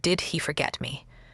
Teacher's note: a rising tone in did he forget me? clearly signals a question